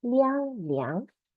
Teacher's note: 梁 is like li plus ang, second tone